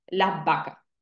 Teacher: la b se produce como una oclusiva bastante eh tensa